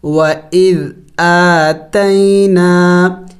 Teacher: الف مدہ ہے، اس کو بھی لمبا کرنا ہے ایک الف کے مقدار